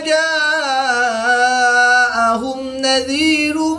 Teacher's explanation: میم ساکن کے بعد نون ہے تو یہاں پر میم ساکن میں اظہار شفوی ہوگا، غنہ نہیں کریں گے